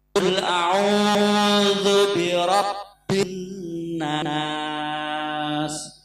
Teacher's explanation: tasdidnya kena, tapi agak ditahan agak lama. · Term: nun gunah